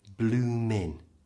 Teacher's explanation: Now blooming, as you can see, is spelt with a G, but we don't usually pronounce it. The G is silent, so it's just bloomin'. Stops on the N sound.